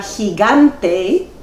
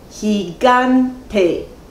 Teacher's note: en la palabra gigante hay tres sílabas gigante y el acento prosódico recae sobre la segunda sílaba